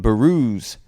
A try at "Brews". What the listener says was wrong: So that's Brews, BREWS, not the way just pronounced it, BAREWZ.